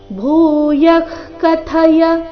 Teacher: ಕಥಯ ಇಲ್ಲಿ ಥ ಮಹಾಪ್ರಾಣ ರಸ್ವ